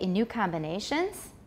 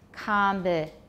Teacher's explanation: the tonic will be low and rising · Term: yes-no question rise